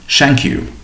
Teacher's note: th does not exist in Chinese, and so learners replace th with s, with an example being shank you.